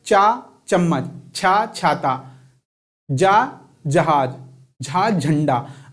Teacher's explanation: जब आप चा बोलते हैं तो जीभ आपके तलवे में लग रही है, बार बार कहाँ लग रही है, तलवे में। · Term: चा वर्ग